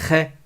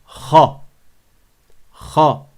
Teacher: elle a une voyelle Fath qui est grave et qui n'est pas aigu qui n'est pas légère